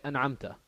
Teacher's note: There's no ghunna, there's no joining, there's no idgham, there's no assimilation, there's no nothing.